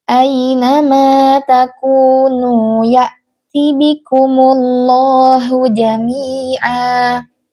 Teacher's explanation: hamzahnya diperjelas, jangan diseret, jangan tasil, jangan ya'ti bikumullah, nggak seperti itu ya Ummi, tapi dijelaskan hamzah sukunnya.